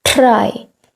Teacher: and then you draw it back try when you say try in the indian version of it you would touch your tip of the tongue at the roof you would roll it forward try but actually you should keep your tongue at the tip